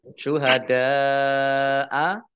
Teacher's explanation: Syuhada'a dal fathah alif mat tabi'i, tetapi karena bertemu dengan huruf hamzah dalam satu kata, maka menjadi mat wajib muttasil. Mat wajib muttasil dibaca panjang 5 harokat.